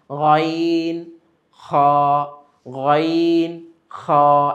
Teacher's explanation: তো এখানে অতটা চাপ লাগে না, কিন্তু আওয়াজের প্রকম্পন, আওয়াজের যে একটা ধ্বনি আমরা বের করি সেটা কিন্তু হলকের শেষ থেকে আসে। গাইন খ, গাইন খ, একটা কম্পন সৃষ্টি হয় হলকের মধ্যে।